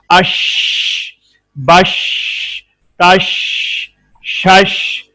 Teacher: جی شین pronounced as شین using middle of tongue to touch the middle part of palates